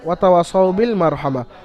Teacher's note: ওয়াওয়ের উপর জবর আলিফ মাদ্দা এক আলিফ পরিমাণ ওকে টান দিয়ে পড়তে হবে